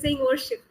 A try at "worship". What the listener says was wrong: wa, that wa needs to be a little bit more focused.